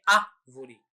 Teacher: A palavra árvore contém a sílaba forte no início da palavra. A primeira sílaba é a sílaba forte, né, que é árvore, né? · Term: proparoxítonas